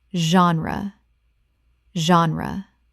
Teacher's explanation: The G makes a Z sound, and the E is not pronounced at the end